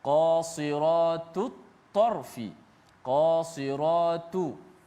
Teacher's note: Huruf yang bersamaan pada makhraj, ta dengan ta satu makhraj yang sama, hujung lidah di belakang gigi ataupun gusi atas